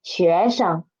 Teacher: Sheng is the neutral tone. And because 学 is second tone and Sheng is after it, so Sheng's pitch should be lower than 学.